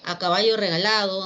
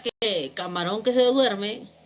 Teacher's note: esos enunciados que no han sido concluidos llevan la entonación suspendida o la entonación de tipo horizontal